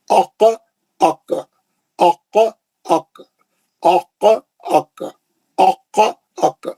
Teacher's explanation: خاف میں خلخلہ ہے, کاف میں نہیں ہے